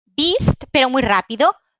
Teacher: Esta, que es la vocal larga, beast, porque la corta es más abierta